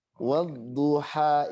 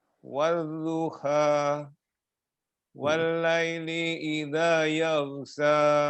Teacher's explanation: Jangan kayak kaf ya. Wadduha, ingat di tengah tenggorokan.